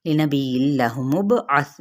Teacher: با پہ قلقلہ تھا نرمی کے ساتھ